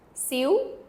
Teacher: It's a little bit different, but it has a little bit of a V sound at the end or a W.